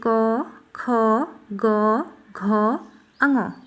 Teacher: क वर्ग के सारे वर्ण क्या होते हैं, कंठ के होते हैं, मतलब कंठ से बोले जाते हैं।